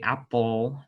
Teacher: when we say apple in english that's a dark l